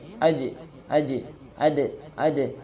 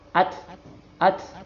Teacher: sama ka dia jadi hams Jim AJ AJ ad ad Nah pantulannya itu itu jahr menggetarkan pita suara j-nya itu Je AJ itu menggetarkan Pit suara berbeda dengan ta